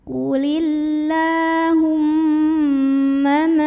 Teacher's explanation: Maka cara membunyikannya adalah mimnya didengungkan, ditahan kurang lebih 2 harokat. Jadi bunyi nya tahan. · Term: ghunnah musyaddadah